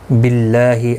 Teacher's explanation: اللہ کا لام زیر کی وجہ سے باریک پڑھا جائے گا